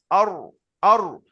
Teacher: এই রটা উচ্চারণ করার সময় আমাদের এই যে জিভের আগা আছে, এর আগার উল্টো পিঠ মানে এই নিচের দিকটা, তাহলে নিচের দিকটা উপরে উঠবে কি, আমাদের জিভটা এই শুয়ে আছে, নিচের দিকটা উপরে যাবে কি, জিভটা ঘোরাতে হবে, জিভটা ঘুরিয়ে গোল করতে হবে, করলে ওপরে তালুতে লাগলেই উচ্চারণ হয়ে যাবে র